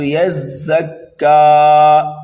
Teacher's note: یزکا وقف کر دیا تو صرف کاف کو ایک الف کے برابر کھینچ کر کے پڑھنا ہے